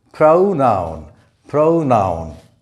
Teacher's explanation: in pronoun, the O represents an A sound, the schwa sound · The stress is on the first syllable.